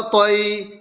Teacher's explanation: یا ساکن سے پہلے تو پر زبر کی حرکت ہے، اس لیے یالین ہوا، اور یالین کو نرم آواز کے ساتھ معروف پڑھیں اور جلد پڑھیں۔